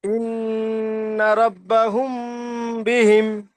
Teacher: মিম সাকিনের পরে বা এসেছে, তাই মুম তাই মিম সাকিন এক আলিফ পরিমাণ গুণনা করে পড়তে হবে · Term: মিম সাকিনের ইজরা